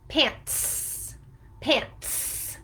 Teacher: the T sound is voiceless, so that's why the plural S sounds voiceless in the word pants